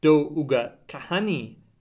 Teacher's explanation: Gorwaa marks the interrogative mood on verbs with a rising falling intonation